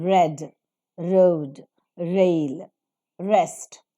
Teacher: the air is released without audible friction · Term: frictionless continuant